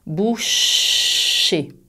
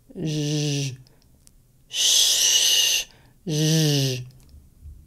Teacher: quand tu prononces le son je, il n'y a pas d'air qui passe.